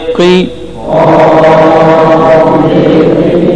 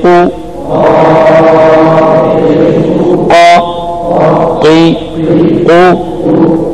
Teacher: कौफ पुर और सख्त आवाज से अदा हो